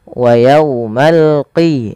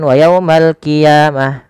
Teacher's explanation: Jangan wa yaumal qiyamah, nanti jadi huruf kaf. Dia adalah huruf qaf ya, lebih tebal hurufnya, dan dia sifatnya sifat isti'la, pangkal lidahnya terangkat